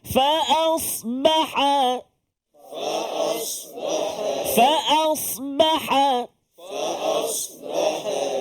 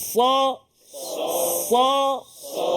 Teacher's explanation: ni kita jumpa pula huruf sad huruf sad sad sama juga dia hujung lidah tapi dia tolak ke gigi bahagian bawah pangkal gigi